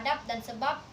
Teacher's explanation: Tetapi dalam kondisi tertentu fungsi pembeda antara B dan P bisa batal setidak-tidaknya bermasalah karena dijumpai bunyi yang sama. Misalnya fonem B pada silaba akhir kata adab dan sebab yang persis sama dengan pengucapan fonem P pada atap dan usap. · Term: netralisasi